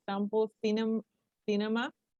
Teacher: the accent falls on the third syllable from the end of the word